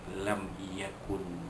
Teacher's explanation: Di lam yakun, lam yakun mimati jumpaya, hukumnya izhar syafawi, dinyatakan bunyi mim mati yang bertemu dengan ya, maka mim mati itu sempurna tak ada dengung